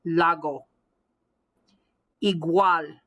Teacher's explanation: g almost as if i'm swallowing it the back of my tongue when i say that g is hitting the back of my palate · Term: throttle g